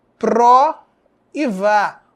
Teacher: Pró é a sílaba átona, vá é a sílaba tônica.